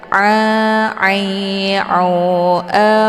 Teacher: Jadi jangan dibaca lil alamin, Kalau dibaca a, itu bacaan yang salah karena a sudah keluar dari jalur hidung. Sementara posisi ain yang tepat di situ adalah di tenggorokan bagian tengah. Jadi jangan sekali-kali membaca alamin, tapi a agak ditekan sehingga papan lehernya menghempit di pangkal lidah.